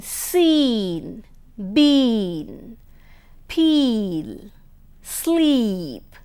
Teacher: E as in seen, been, peel, sleep, the long vowel E, which is at the close. It's known as a front close unrounded vowel.